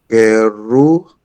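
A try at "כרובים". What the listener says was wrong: Well done, kruim.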